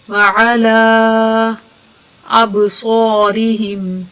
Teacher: یہ مد منفصل ہے، اس کو مد جائز بھی کہتے ہیں. اس الف کو 2 سے 3 الف کے برابر کھینچ کر پڑھتے ہیں · با پہ ادھر کلکلا کریں گے، ٹھیک ہے، تھوڑا سا ہلا کر پڑھیں گے